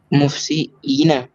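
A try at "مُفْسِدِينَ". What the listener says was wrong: नहीं ना, दाल तो रहेगा ना, मुफसी दीना, है ना, मुफसी।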